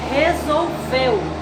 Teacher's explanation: ao pronunciar a palavra resolveu, nós temos ela com 3 sílabas, resolveu. E a sílaba mais forte, veu. Então, a sílaba tônica, veu, resolveu.